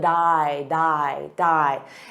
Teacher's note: on what so it sounds like a soft D but then you add that D to the next sound which is I